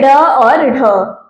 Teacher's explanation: उत्क्षिप्त यानी वे वर्ण जिनका उच्चारण करते समय जीभ एकदम से ऊपर उठे और फिर एकदम से नीचे आए